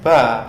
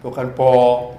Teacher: Nah untuk hamzah ini sifatnya tipis, istifal. Istifal itu pangkal lidah turun sehingga a bukan o.